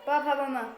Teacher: भ म भ वर्ग और ये ओ से बन जाती है होठों से बोल जाते हैं होठ से होठ आपको बंद करना पड़ेगा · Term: प वर्ग